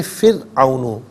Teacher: فرعون میں را ساکن ماقبل فا کے نیچے زیر ہے، تو یہاں را ساکن کو باریک پڑھیں گے